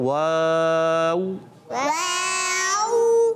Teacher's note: دونوں ہوٹوں کی گولائی سے ادا ہوتا ہے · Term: عربی والا واو